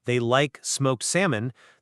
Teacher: If you say, "I don't know what to cook for them," and I simply reply with the standard SVO sentence, "They like smoked salmon," the stress of my voice on the words smoked salmon achieves the exact same isolation of new information as a complex cleft sentence